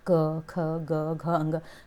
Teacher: के देख लीजिए क ख ग घ अंग कितने कंठ से यानी कि उच्चारण स्थान क वर्ग का क्या है कंठ है